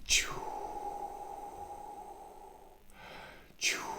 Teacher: And you can create a slight whistling sound. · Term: ch sound